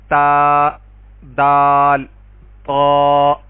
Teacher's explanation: اسی طرح تا دال طا، یہ جو حرف ہیں یہاں پہ زبان کی نوک ثنایا علیہ یعنی اوپر والے دونوں دانت کی جڑ سے لگنے پر یہ تینوں حروف ادا ہوں گے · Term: نطاعیہ